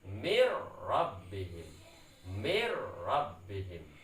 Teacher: Tapi cara bacanya harus diidghamkan karena nun sukun bertemu dengan ro. Hukumnya harus diidghamkan, artinya disatukan nun dengan ro-nya. Dan cara bacanya tanpa dengung bila gunnah.